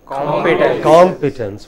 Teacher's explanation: The first part is stressed.